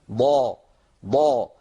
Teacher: الضاد مطبقه لان الصوت عند النطق بها ينحصر بين غار الحنك وبين اللسان هذا غار الحرك سقف الحلق يعني وهذا لسان فالحصار الصوتي بين